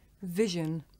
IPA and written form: ˈvɪʒən (vision)